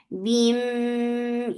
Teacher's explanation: idgham with gunna, so keep the sound in your nose.